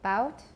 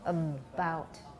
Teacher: You should have voicing even before the stop is released.